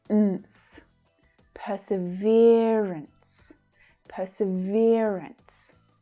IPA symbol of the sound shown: -əns